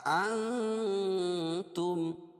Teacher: اخفا حقیقی ہوگا، ناک میں آواز کو چھپا کر پڑھیں گے